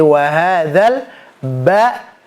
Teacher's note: Jadi karena dia sifatnya adalah jahar, jadi nggak ada nafasnya. Jadi ketika kita mengucapkan huruf ba jangan sampai ada nafasnya